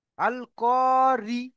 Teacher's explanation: মুখ লম্বা হচ্ছে, অর্থাৎ বারিক করে পড়তেছে